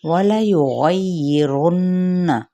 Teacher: नून मुशद्दद है तो गुन्ना करेंगे प्रॉपर, यानी नाक में थोड़ी देर आवाज़ को ठहराना